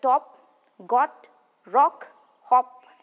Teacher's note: height of the tongue fully open part of the tongue which is the highest is the back position of the lips open lip rounding and opening between the · described as an open back rounded vowel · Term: o sound